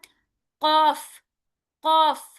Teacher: قاف، قاف، یہ جو قاف ہے نا، قاف میں نے کہا تھا نا زبان کے جڑ سے سٹارٹ ہوتا ہے